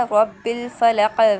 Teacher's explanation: پھر رب الفلق، یہاں پر جو قاف ہے ادھر وقف ہوگا، وقف کی صورت میں اسے ہم قلقلہ کریں گے، یہ قلقلہ کے لیٹرز میں سے ہے، رب الفلق یعنی باؤنس بیک کریں گے۔